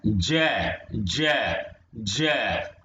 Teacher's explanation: हमारी जीभ जो है तालु पर टकरा रही है